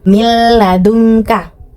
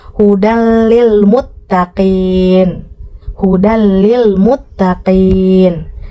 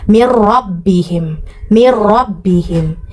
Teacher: Nah, kalau idgham bila gunnah berbeda, terbalik. Jadi dia ditasydidkan tetapi tidak mendengung.